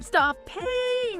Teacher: The P is often unreleased